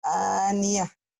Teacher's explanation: tak marbutoh jika dihentikan berubah menjadi ha